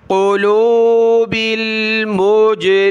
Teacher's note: یہاں جیم پر قلقلہ ہوا